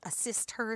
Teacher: So, for example, if somebody says, you need to assist her with a project, and a student hears a sister instead of assist her, because we cut the H sound off of unstressed pronouns, so it's assist her sounds like a sister.